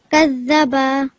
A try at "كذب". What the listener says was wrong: Okay, كذب. So not prolonging the ba.